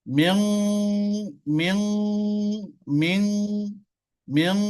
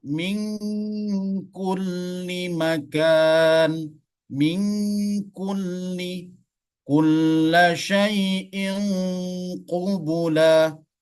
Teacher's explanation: Kalau nun sukun berada di ujung lidah, sedangkan qaf dengan kaf dia berada di pangkal lidah. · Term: ikhfa ab'ad